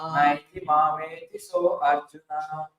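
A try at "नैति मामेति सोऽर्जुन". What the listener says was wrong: Not so Arjuna. Not like that. Because you see that it's a apostrophe in Sanskrit. You see that? You see so and no A there. So when you read this word, it's Sojuna. Not so and Arjuna.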